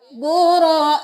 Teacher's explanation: کھڑی زبر ایک الف کے برابر کھینچی جائے گی اور مد 5 انگلیوں کے برابر کھینچی جائے گی